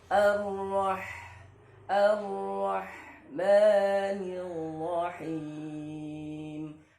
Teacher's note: Ha, ada nafas yang berhembus ya atau suaranya terlepas ya. Him ya suaranya terlepas.